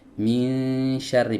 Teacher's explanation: posisi tengah lidahnya ini diangkat sedikit teman-teman, bukan belakang lidahnya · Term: ikhfa